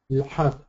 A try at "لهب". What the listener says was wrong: The ha is the small ha, right? So there's no laha, but it's lahab.